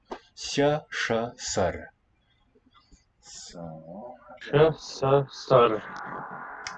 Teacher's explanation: Sha, palatal first. Sha, retroflex. Sa, dental. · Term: fricatives